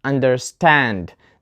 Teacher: the answer is understand the stress is on the second part we have a compound word which contains two words under and stand so this is a verb and we put the stress on the second part for compound verbs